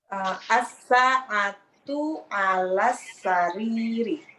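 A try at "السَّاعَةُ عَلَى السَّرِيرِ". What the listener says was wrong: Ahsan. Baik.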